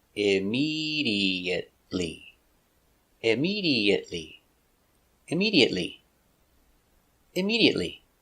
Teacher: immediate stop T IM immediate immediately immediately immediately five syllables immediately stress on a second syllable